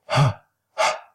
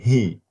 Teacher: the sound also at the glottis, which is the ha, as in he. So that also is a glottal sound.